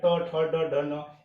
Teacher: ट, वर्ग का उच्चारण स्थान मूर्धा है।